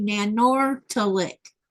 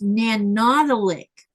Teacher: Actually, the R is silent and the T is a D sound.